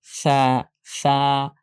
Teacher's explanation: জিহ্বার আগা দাঁতের আগার সাথে লাগবে, নরম করে উচ্চারণ করতে হবে। সা অনেক নরম করে, আলতো করে।